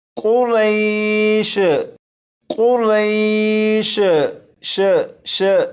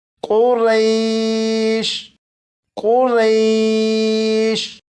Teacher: خیال رکھیے گا کہ شین کو جب پڑھیں تو شین پر کلکلہ نہ ہو، جیسے قریش، قریش، ش ش، اس طرح سے آخر میں شین کی آواز نہ آئے، بلکہ جب آپ شین پر پہنچیں تو شین پر پہنچتے ہی آواز کو ختم کر دیجیے گا، جیسے قریش، قریش۔